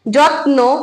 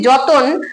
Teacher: ত ন টা কিন্তু আলাদা হয়ে গেছে যুক্ত ব্যঞ্জন ভেঙে আলাদা যখন আমরা যত্ন বলছি যত্ন তখন কিন্তু ত এর সঙ্গে আমাদের অ আসছে না যখন আমরা বলছি যতন তখন ত এর সঙ্গে কিন্তু অ আসছে · যখন আমরা বলছি যতন, তখন তয়ের সঙ্গে কিন্তু অ আসছে। তাহলে এখানে আমাদের দেখা গেল যে মধ্যে একটা নতুন স্বরধ্বনি আসছে, সেটা হচ্ছে অ। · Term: মধ্য সরাগম, মধ্য স্বরাগম